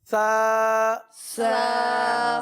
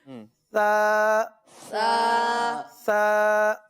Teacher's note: इसमें सीटी की आवाज नहीं आएगी, सही है, जबान ऊपर लगेगी और बिल्कुल नरमी के साथ ये अदा होता है। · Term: 3 नुक्ते वाले हर्फ सा